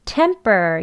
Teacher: 숨을 참았다가 참은 숨이 또 폭 나오면서 temper 이렇게 발음되어지는 겁니다. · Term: 된 소리